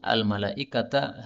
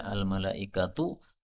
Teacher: al-malaikata harus dibaca al-malaikatu, taknya di dhammah. Tidak boleh di fathah lagi.